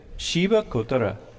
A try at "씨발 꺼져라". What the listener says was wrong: There's a bit of a G in the middle. 꺼져라.